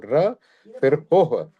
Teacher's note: र और हो के बाद विसर्ग है, तो हो के बाद एक हल्का सा ह की साउंड आती है